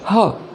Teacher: الحالة الستة لحرف التي، وهي برضو من الحالات الكريزي جدا بالإنجليش، وهي حرف التي في الآخر. لما بتيجي حرف التي في آخر الكلمة ما بنطقهاش خالص وبتصبح silent letter